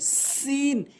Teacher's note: এরপরে সিন ভুল উচ্চারণ, সিন ভুল উচ্চারণ, সিন সঠিক উচ্চারণ, সিন সঠিক উচ্চারণ, অর্থাৎ ঝার মতো করে জিহ্বার আগাটি নিয়ে উপরে নিচে দুইটি দাঁতের আগাতে লাগাবেন